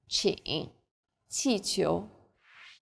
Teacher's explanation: Qi is like the CH in cheap, but again with a flatter tongue and a stronger puff of breath.